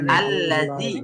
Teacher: এখানে জালের উচ্চারণটা জিহ্বার আগা থেকে